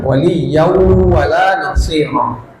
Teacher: Idgham bersama gunah. Dimasukkan tanwinnya ke wunnya kemudian dilamakan digunahkan.